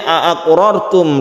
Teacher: ra-nya ditebalkan karena sebelumnya ada fathah, dibaca tafkhim.